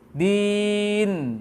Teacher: Jangan menambah ha sukun setelah nun di ujung.